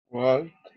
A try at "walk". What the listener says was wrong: Pay attention to the pronunciation of walk. You don't pronounce the letter L. No pronunciamos la L, ¿sí? Solamente walk.